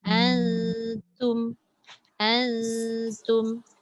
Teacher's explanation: Tapi walau macam mana pun kata ikhfa itu tidak lekat, pastikan pula kalau ta tu huruf nipis, maka bunyi dengung nun atau tanwin itu nipis. Jangan pula kita nampak nun bertemu ta, kita baca autum dah jadi tebal, tak sesuai pula nun tu tebal, ta tu nipis.